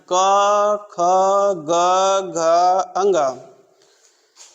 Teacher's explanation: क वर्ग जहाँ सीधे गले से जो आवाज़ आती है उसे कहते हैं कंठ।